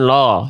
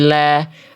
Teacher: Lam itu huruf tipis jangan lo. Tapi la. Lidahnya dalamnya rileks.